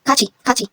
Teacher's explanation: yung T, if kasunod niya ay I, magiging CH sound. Hindi po kati, kachi.